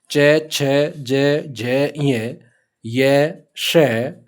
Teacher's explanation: इनके अंदर जीवा है, वो जीवा तालु के लगती है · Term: तालव्य वर्ण